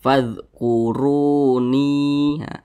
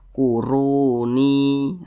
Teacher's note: ru dibaca tebal, dibaca tafkhim. Huruf ra dibaca tebal karena dia berharokat dhammah, maka huruf ra dibaca tebal.